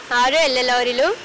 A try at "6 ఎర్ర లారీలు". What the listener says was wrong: ఎల్లో లారీలా? ఎల్లో కాదు ఎర్ర, ఎర్ర లారీలు.